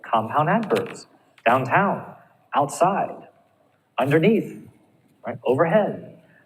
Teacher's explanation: you're going to stress the second syllable